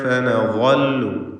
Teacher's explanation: ഫനളു, ഇവിടെ തൻവീനും ശേഷം ഫാഉമാണ്. ഇഖ്ഫാ ഹഖീഖി നൽകി മറച്ചു മണിച്ചു ഉച്ചരിക്കണം. തൻവീനിനെ മണിച്ചുകൊണ്ട് അവ്യക്തമാക്കി ഉച്ചരിക്കുക